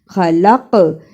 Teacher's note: زبر نا جئتمونا خلقناکم خا زبر خا لام زبر قاف لق قاف پر جزم ہے اور جزم کی صورت میں یہ حرف قلقلہ ہے۔ قلقلہ کا مطلب آواز کا پلٹ کر آنا۔